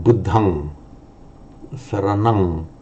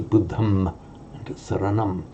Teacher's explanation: So at the end of a word group on its own, for Pali, pronounce it as an ang. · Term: ng sound